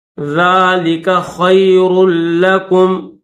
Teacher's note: را کو لام کے ساتھ ملائیں گے